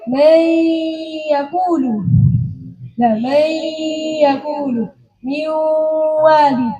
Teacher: Hanya makhrajnya nun saja yang masuk pada ya dan waw. Tapi sifatnya masih tetap, yaitu sifat gunnahnya. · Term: idgham nakis